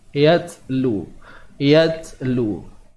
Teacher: Yatlu alaihim, huruf ya bertemu ta yang mati, maka pada ta ni kita akan lihat adanya sifat hams.